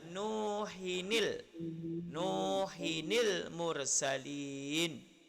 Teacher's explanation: Jadi kita tanwin kita buang, kita letak nun baris bawah.